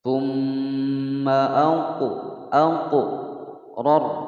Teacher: ra berharokat fathah dibaca tebal atau tafkhim. Kemudian yang kedua ra berharokat sukun, sebelumnya huruf yang berharokat fathah maka dia juga dibaca tafkhim, dibaca tebal.